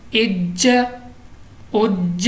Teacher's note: चूँकि कलकला है जमाओं के साथ पढ़ेंगे